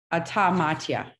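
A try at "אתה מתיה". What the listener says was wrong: Bravo.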